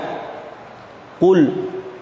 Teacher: Qaf itu makhrajnya ada di lidah paling belakang, naik ke langit-langit, ketemu langit-langit atas yang paling belakang.